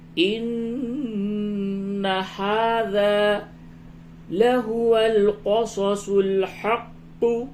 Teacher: نون مشدد ہے، اس جگہ پہ غنہ کیجئے